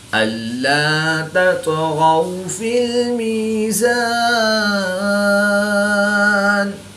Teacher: طا حروف قلقلہ میں سے ہے تو یہاں پر قلقلہ صغریٰ کر کے پڑھیں گے۔ تا اور طا میں فرق کریں گے، تا کو باریک اور طا کو پر یعنی موٹا پڑھیں گے۔